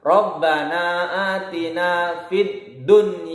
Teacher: membacanya idzhar wajib tidak didengungkan